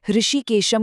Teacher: जो श है वो तालव्य है। यानी बोलते वक्त जीभ तालु को छूनी चाहिए। · ऋषिकेशम कहते हैं तो उसमें इ और ए दोनों को थोड़ा खींचना है। वो दीर्घ स्वर हैं और जो श है वो तालव्य है।